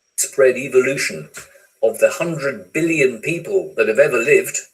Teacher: ever is stressed and live is stressed